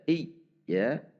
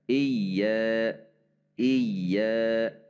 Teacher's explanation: ada hentakan atau ada tekanan yang menandakan ada tasydid